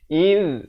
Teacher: Iz, hujung lidah keluar menyentuh 2 gigi depan.